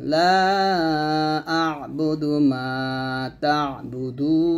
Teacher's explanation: লা আ'বুদু হামজা আইন জবর আ আইনটা চাপ দিয়ে উচ্চারণ করবেন